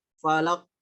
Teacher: Qafnya terlalu lama ditahan. Falaq. Nah, kalau mau ditahan, itu harus qafnya itu bertasdid.